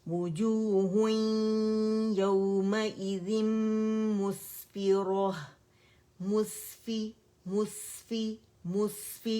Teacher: सीन में रखावा भी है, सीटी भी है, ठीक है, हम्स भी है, आवाज चलेगी।